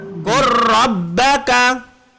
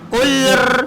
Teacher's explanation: Okey, jadi qaf dengan kaf, lam dengan ra. Ketika lam bertemu dengan ra, maka bacaannya kena masuk kepada ra. Lam hilang.